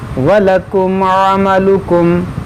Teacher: عین کو وسط حلق سے ادا کیا جاتا ہے